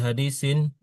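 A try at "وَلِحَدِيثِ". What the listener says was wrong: Hadisi, jangan hadisin. Hadisi.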